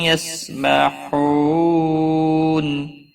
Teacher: بحو واو مدہ ہے، ایک الف کے برابر کھینچ کر پڑھیں گے، نا کو کھینچنا نہیں. اور نون وقف کی صورت میں نون ساکن پڑھا جائے گا، وقف بالاسکان ہوگا، 3 سے 5 الف کے برابر کھینچ کر وقف کریں گے.